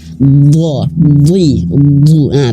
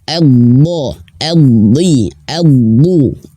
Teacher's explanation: huruf dad Dia memiliki sifat jahr tidak mengalir nafas